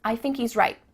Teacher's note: Do you notice too at the end of the word right? There's no t sound.